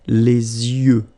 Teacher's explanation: Okay, so l'œil, singular, and then the plural, les yeux. Okay, you make this liaison between the two.